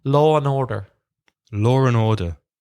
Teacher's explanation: people with English accents when they say Law & Order put more R sound than people with Irish or American accents